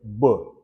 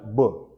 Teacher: we say that b is a bilabial sound labal lips and by two so that means both your lips